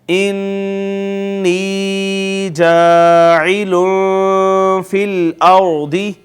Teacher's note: نون مشدد اور نون مشدد پہ یقیناً غنہ ہوگا ، اس کے بعد یا مدہ ہے، الف مدہ ہے، اور